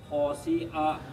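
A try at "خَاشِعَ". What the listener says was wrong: Nah, ini tebal. Shi. Khosyi'a. Kho-nya pendek dong. Khosyi'a, satu ketukan aja.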